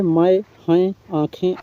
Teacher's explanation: इन स्वरों के उच्चारण में ध्वनि मुख के साथ-साथ नासिका द्वार से भी निकलती है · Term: अनुनासिक स्वर